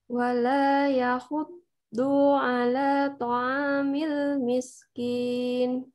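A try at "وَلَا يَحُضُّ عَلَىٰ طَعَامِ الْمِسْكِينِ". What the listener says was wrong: Dunya satu ketuk aja. Itu nyeret tadi. 2 ketuk itu. Yahuddu a. Langsung pindah ke a. Nah, caranya supaya nggak nyeret diputus. Yahuddu. Udah satu aja.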